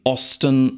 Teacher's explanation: in Osten sehen wir diesen glotalplosiv den wir hören den wir in der graphematischen in der orthographischen Ebene nicht schreiben den wir aber transkribieren müssen wir können uns nun wenn wir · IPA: [ʔɔstən]